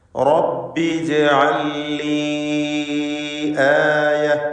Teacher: 4-5 ഹറക്കത്തിൻ്റെ അളവിൽ യാഇനെ ദീർഘിപ്പിക്കൽ അനുവദനീയമാണ്. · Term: മദ് മുൻഫസിൽ ജായിസ്